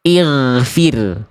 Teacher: goin sukun itu akan dibaca ketebalannya berkurang ketika goin sukunnya didahului oleh huruf berharokat kasroh. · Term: Tafkhim nisbi